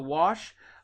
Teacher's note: in Appalachia they add an R to wash